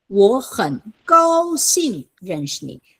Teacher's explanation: The first third tone becomes a second tone.